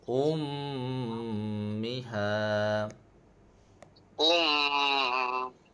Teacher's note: Dia kena dengung dalam kadar dua harakat. Sebab mim yang bertasydid kena dengung dua harakat.